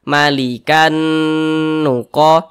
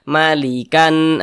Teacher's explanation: dia digunahkan atau didengungkan jadi suaranya itu kita tahan kita panjangkan sejenak